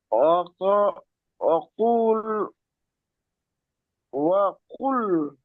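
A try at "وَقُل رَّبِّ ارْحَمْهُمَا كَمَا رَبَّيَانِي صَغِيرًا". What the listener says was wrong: না, কুল না। ওয়াকুর। কুল ধরবেন না, তাসদিদের ডানে সবসময় হারাকাতকে ধরে পড়তে হয়, তাজদিদ দুইবার পড়তে হয়।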